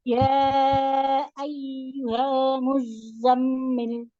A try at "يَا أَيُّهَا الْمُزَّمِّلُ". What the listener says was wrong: Tahan dulu mim tasdidnya muzammil. Ada mim.